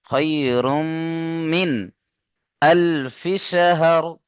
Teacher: নুন সাকিনের পরে হুরুফে হালকি 6টি অক্ষরের মধ্যে হামজা এসছে, তাই নুন সাকিনকে বিনা গুন্নায় জাহির করে পড়তে হবে।